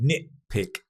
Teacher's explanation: To nitpick. Nitpick. Drop the T sound normally. Nitpick. To nitpick is to focus on the small details or small mistakes rather than the bigger picture.